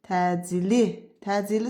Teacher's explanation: təcili sözündə vurğu sonaya düşməlidir